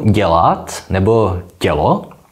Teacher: Takže opět, pokud máme slova jako dělat nebo tělo, tak v nich není žádný zvuk E s háčkem. Tam je normální E, jako v jakémkoliv jiném českém slově, za to ale vyslovujeme změkčeně ty předcházející alveoláry. Tedy slovo tělo nehláskujeme jako T, E s háčkem, L, O, nýbrž jako T, E, L, O.